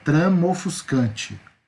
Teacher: Perceba, trama ofuscante. Eu junto na hora de falar, eu articulo a minha boca um som só. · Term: sinalefa